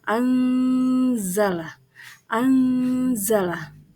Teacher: ayat 48 pada lafaz anzala jadi yaitu ikhfa Hakiki karena ada huruf nun mati bertemu dengan huruf Za cara membacanya samar-samar dengan membentuk huruf Za · Cara membacanya samar-samar dengan membentuk huruf za. Jadi cara membacanya itu adalah anzala.